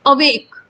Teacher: तो जब हम अवेक बोलते हैं तो अ की साउंड स्लो आ रही है, और वेक की साउंड ज्यादा तेज से आ रही, बहुत बलपूर्वक आ रही है। तो यहाँ पे स्ट्रेस्ड नहीं है, वेग स्ट्रेस्ड है।